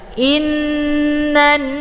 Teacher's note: nunnya ditekan kemudian ditahan lebih kurang 2 harokat sehingga terbentuk suara yang mendengung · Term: ghunnah musyaddadah